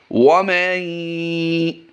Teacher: یاد رہے واو پر ہونٹوں کو گول کر دیں گے